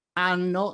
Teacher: Nell'italiano parlato è fondamentale pronunciare bene le doppie consonanti. Nel caso della pronuncia della parola anno, con o senza H, fate sentire benissimo la doppia consonante N.